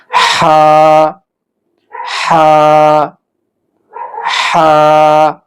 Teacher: এরপরের অক্ষরটি হলো হা, অর্থাৎ হা উচ্চারণ করতে হয় হলকের অর্থাৎ কণ্ঠনালীর মাঝখান থেকে। কণ্ঠনালীর মাঝখান থেকে হা উচ্চারণ হবে। যেমন আমরা উচ্চারণ করি হা, একটু চিপায়, একটু চিপিয়ে উচ্চারণটা করতে হবে।